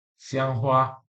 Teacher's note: the first tone, intonasi pertama dalam bahasa Mandarin, bukan kedua